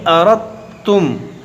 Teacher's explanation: رت۔ اب یہ دال کی آواز نہیں معلوم پڑ رہی ہے، دال سائلنٹ ہو گیا کیونکہ دال جو ہے تا میں داخل ہو گیا، تو اس کو پڑھیں گے اردتم۔ وَإِنْ أَرَدْتُمْ أَن تَسْتَرْضِعُوا أَوْلَادَكُمْ